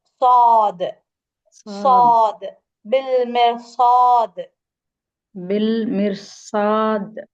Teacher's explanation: சாது சொல்லும்போது உங்களுடைய நுனி நாக்கு கீழ் பற்களுக்கு பின்னாடி இருக்கணும்